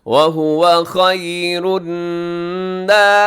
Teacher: نون مشدد تو ہوگا غنہ ، ناصرین صاد بھی موٹا رکھیے گا، را باریک ہے، کھینچیے · ناصرین صاد بھی موٹا رکھیے گا، را باریک ہے، کھینچیے گا کیونکہ یا مدہ ہے ، یہاں وقف کرتے ہوئے بھی آپ لمبی مد کر سکتے